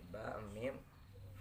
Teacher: Asyabatain ini penempatan antara keluar huruf dari dua bibir.